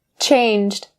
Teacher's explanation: That final sound has to be very clear. And the reason it has to be clear is because these sounds are voice consonants. So if you are a beginner of English, you might find it really challenging to connect these sounds together, especially when it's coming at the end of a word like this.